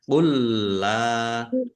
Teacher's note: Qul la, lam fathah alif mat tabi'i, tetapi karena bertemu dengan huruf alif dalam satu kata, maka menjadi mat jaiz munfasil. Dibaca panjang boleh 5, boleh 2 harokat. · lam juga ditandai lam yang kedua ada tasdidnya. Lamnya Yang kedua dibaca double.